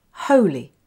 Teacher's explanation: So the li is the unstressed syllable.